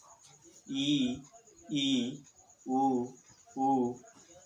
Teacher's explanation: चौथा संवृत्त, इस प्रकार में इस स्थिति में जीभ का भाग जो है वह बहुत ऊपर उठता है, और जीभ और तालु के बीच दूरी बहुत कम होती है। अर्थात जिह्वा स्वर सीमा पर स्थित होती है, और ऐसी स्थिति में उच्चारित स्वरों को संवृत्त स्वर कहा जाता है।